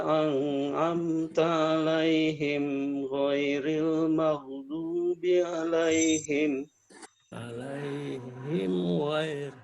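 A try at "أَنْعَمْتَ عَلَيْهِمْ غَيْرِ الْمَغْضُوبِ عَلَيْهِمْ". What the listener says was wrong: Ainnya kurang. An'amta 'alaihim lagi. An'amta 'alaihim. Ainnya kurang sedikit saja. Ya, tetap harus latihan pengucapan ain. Alaihim. Huruf ain dalam surat Al-Fatihah ini ayat kedua alamin. Lalu pada ayat kelima iyyaka Iya.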